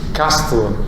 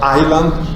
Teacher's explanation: Castle, donc le S est prononcé, mais dans Island, il n'est pas prononcé.